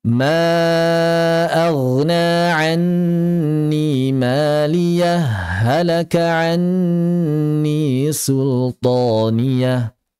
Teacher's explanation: Ya diidghamkan karena ada pertemuan ha dengan ha.